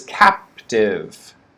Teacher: stress on the first syllable captive